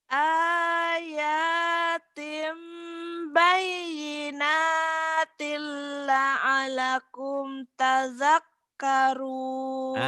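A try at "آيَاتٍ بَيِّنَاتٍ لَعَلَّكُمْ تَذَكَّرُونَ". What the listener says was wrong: La'alnya terlalu cepat. Ayatim bayinatil la'allakum tazakkarun. La'alnya tadi kecepatan.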